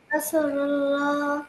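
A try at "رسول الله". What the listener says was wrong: রাসূলুল্লাহ, রসু রসু, একটু দীর্ঘ, হ্যাঁ। রাসূলুল্লাহ, রাসূলুল্লাহ, নট রা, র, ইটস র, রসুল্লাহ, রসুল্লাহ।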